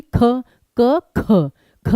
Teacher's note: ख क ख जो है ये आपका अघोष है और महाप्राण है